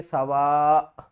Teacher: وقف کی صورت میں ہم کیا کریں گے کہ اوپر والی 2 پیش ختم ہو جائیں گی اور اس کو پڑھیں گے سوا. سوا لاسٹ میں حمزہ کی آواز ضرور آنی چاہیے